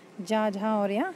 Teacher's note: तीन व्यंजन जा, झा और या क्या होते हैं, घोष होते हैं